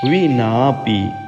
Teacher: हाँ, दीर्घ होने से ना के लिए थोड़ा सा खींचिएगा।